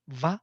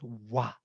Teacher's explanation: with lip, lower lip, I touch upper teeth, va, or with 2 lips, I create wa, where I don't touch teeth